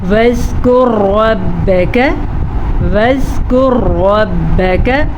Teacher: را کو پر پڑھنا ہے، زال کو نرمی کے ساتھ پڑھنا ہے